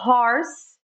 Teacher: O H ele vai ser como um sopro, nunca o do português no início de palavra